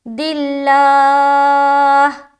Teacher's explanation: رسول من عند اللہ، دلہ لام کو باریک، دلہ، اگر یہاں پر کوئی اس طریقے سے پڑھ دے دلہ تو غلط ہو جائے گا قاعدے کے مطابق، تو موٹا نہیں کرنا، لام کو باریک رکھنی ہے